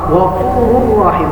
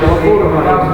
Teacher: apabila ada nun atau tanwin bertemu dengan lam dan ra. Cara membacanya itu dengan tanpa didengung. Kalau tadi pertama dengan menggunakan dengung, yang kedua tanpa dengung. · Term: idgham bila gunnah